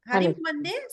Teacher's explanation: మొదటి పదంలో మా రాసి మా కింద అన్నప్పుడు హరి మాకి హలంతం పెడితే అది మీకు సంధి అయినప్పుడు ఏమైంది అంటే ఆ మకారం హలంతం ఉండేది మీకు అనుస్వారంగా మారిపోయింది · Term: అనుస్వార సంధి